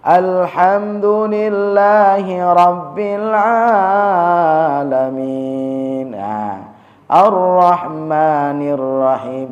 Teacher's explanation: jangan sampai pada alamin lebih panjang daripada Ar-Rahman